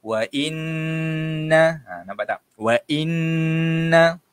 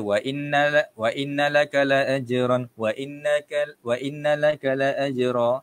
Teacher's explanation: Kita kena baca dia dengan dengung 2 harakat. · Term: wajib dengung